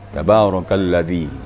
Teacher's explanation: cara membaca zal dilembutkan, ditemukan ujung lidah dengan ujung gigi atas, maka gigi tidak dirapatkan, jadi keluarlah suara zal ya.